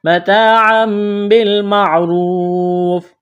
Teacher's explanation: تنوین کے بعد با ہے تو یہاں پر اقلاب کریں گے، آواز ناک میں چھپائیں گے